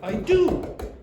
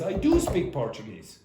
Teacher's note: your voice will go up and it's more emphatic. The word do, not speak. So, usually you'll just say I do.